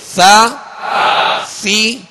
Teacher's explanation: اور ثا کو نرمی کے ساتھ باریک پڑھیں گے